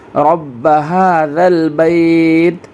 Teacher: رب، یہ را کو با سے ملانا ہے اور با کو ڈبل پڑھنا ہے کیونکہ اس کے اوپر تشدید ہے